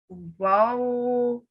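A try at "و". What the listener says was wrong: And you don't need to stretch it out quite so much, okay? Wow.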